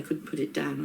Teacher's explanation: Some speakers may fully pronounce both T's, but it's not used in fast speech. The final T in couldn't is often dropped